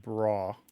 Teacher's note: the Scots will often do it without the V sound. It's more like bra.